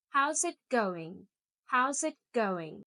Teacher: Notice my intonation goes down at the end.